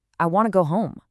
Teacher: We link want to into w to. We stress the important words go and home. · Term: linking